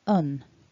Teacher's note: a short vowel and then that n which happens somewhere up in the nose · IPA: ʌn